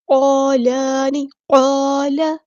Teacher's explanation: لام کی زبر کو ہم لمبا نہیں کریں گے